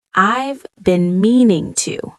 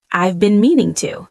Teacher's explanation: the words flow together like one long phrase instead of being spoken separately. Native speakers connect the sounds. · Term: blending sounds smoothly